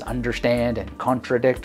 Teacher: Each has 3 syllables, and in each accent, or in each word, the accent falls on the final syllable. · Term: anapest